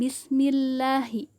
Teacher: Hukum bacaannya yaitu tarhi, sebab jika lafaz Allah didahului harokat kasroh maka dibaca tipis